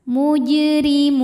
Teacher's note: dibaca secara tarqik karena harakatnya kasrah maka ini RI tipis mujrimun apabila berhenti di Mun hukumnya adalah Mad Arid lukun karena